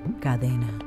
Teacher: entre vocales como era el caso con la palabra latina catena la vibración de esas vocales ae que están alrededor de la t terminan por sonorizar la t y convertirla en una d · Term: sonorización